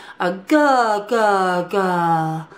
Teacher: Another thing that you can do is make a guh sound with your tongue jutting forward